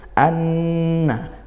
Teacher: nun bertasydid kita baca dengung gunnah hukumnya ya